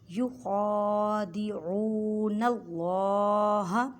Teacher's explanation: خا کو حلق کے اوپر والے حصے سے ادا کریں اور خا کو حلق ایک الف کی مقدار میں کھینچ کر پڑھیں کیونکہ خا کے پر کھڑی ایک زبر ہے۔